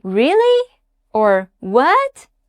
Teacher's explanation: The second tone rises up. Your voice goes higher at the end.